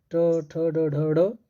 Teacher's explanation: ट वर्ग का ट ठ ड ढ ड मूर्धन्य होता है, जिसमें जो मुड़ जाती है जीवा मुड़ जाती है।